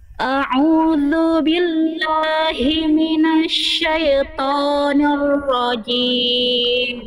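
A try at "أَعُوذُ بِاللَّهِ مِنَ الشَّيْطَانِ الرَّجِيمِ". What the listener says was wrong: Oke, syai jelaskan ya sukun bunyinya jangan syaito. Syai jelaskan syai. Syai tengah lidahnya diangkat ketika ya syai ketika i-nya itu tengah lidahnya diangkat. Lalu ni juga nir rajim, ni-nya jelas dengan nir rajim tapi ni. A'udzu billahi minasyaitonir rajim.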